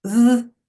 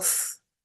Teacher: you get the two sounds, the voiced and the unvoiced